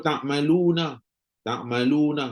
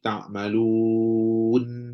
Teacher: Asalnya nun tu berbaris dan apabila berhenti jadi ta'malun, nun dimatikan.